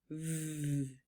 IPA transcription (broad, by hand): v